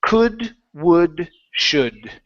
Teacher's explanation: In those words, the L is silent.